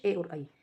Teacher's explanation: ए और आई जो है वो कंठ से भी बोला जाता है और तालु से भी। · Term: कंठ तालु